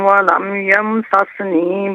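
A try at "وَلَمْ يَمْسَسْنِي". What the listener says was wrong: ولم یمسسنی نہیں یمسسنی، سین کو بالکل ساکن پڑھنا ہے جو نون سے پہلے ہے.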